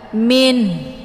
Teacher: sesudah dibunyikan bunyi nun, bunyi n, kemudian ada tekanan di ujung, ada bunyi ha